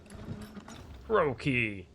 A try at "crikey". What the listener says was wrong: Actually, it's pronounced crikey. I know, the O is confusing.